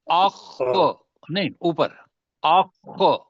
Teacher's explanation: یہ اخ اب موٹا بھی ہے اور خو حلق سے بھی نکلے گا